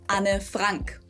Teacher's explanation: it's 2 syllables, Anne, and then the last name just has the German A vowel